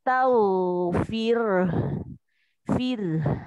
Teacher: roknya tipis karena sebelumnya berharokat kasro